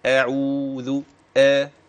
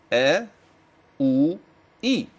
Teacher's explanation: الهمز دائما حينما انطق به فهو مرقق